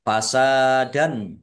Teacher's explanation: Fasadan, sin fathah alif, mat tabi'i, dal fathah tanwin, bertemu dengan huruf alif, bacaan idhar, dibaca jelas.